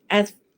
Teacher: Pangkal lidah kita tidak naik. As mendatar begitu di dalam. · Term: istifal